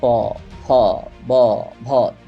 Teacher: देखिए आपके दोनों होठ टच हो रहे होंगे। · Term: ओष्ठ